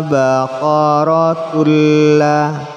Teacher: tanwin bertemu lam, memasukkan suara tanwin pada lam tanpa dengung